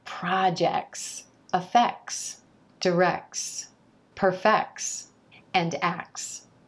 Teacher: you don't need to worry about getting that T in there in words like projects effects directs perfects and acts